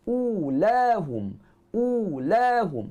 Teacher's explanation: Kita muncungkan bibir mulut panjang dua harakat. Huruf lam kita guna hujung tepi lidah dengan langit-langit keras.